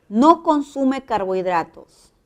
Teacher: Es una negación, el tono baja.